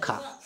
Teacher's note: स्पर्श व्यंजन कंठ ध्वनि अघोष और महाप्राण